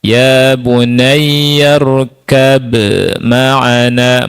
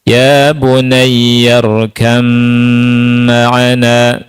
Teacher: Jadi ba-nya masuk ke huruf mim. Tidak ada huruf ba. Otomatis dah berubah ke mim. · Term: Idgham mutajanisain